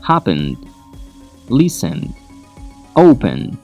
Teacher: The first syllable is the one that is stressed.